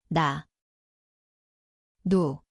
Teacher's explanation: koht on keeleots, ülemine igeme.